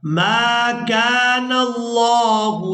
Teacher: यहाँ लफ्ज़ अल्लाह के लाम को पूरा अदा करेंगे क्योंकि इससे पहले वाले हर्फ पर ज़बर है तो लफ्ज़ अल्लाह का लाम पूरा अदा होगा।